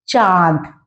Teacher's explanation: इसे हम अनुनासिक कहते हैं क्योंकि इसमें नाक से और मुंह से एक साथ बोला जाता है